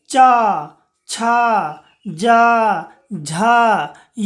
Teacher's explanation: आप जब इस वर्ण का उच्चारण कीजिएगा तो आपका जीभ जो है बच्चों वो देखिए तालु को स्पर्श करेगा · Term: तालव्य वर्ण